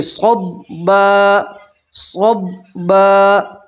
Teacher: 2 زبر کی تنوین پہ وقف کریں گے تو 2 زبر کی تنوین کو الف اور زبر سے بدلیں گے تو پڑھیں گے صبا صبا.